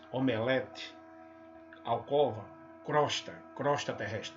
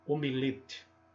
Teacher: Assim como esse omelete é gostoso, também é legal pronunciá-lo, o termo omelete, com o tom da vogal tônica e fechado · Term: timbre fechado